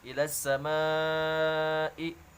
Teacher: terdapat hukum mad wajib muttasil yang harus dibaca panjang 5 harokat.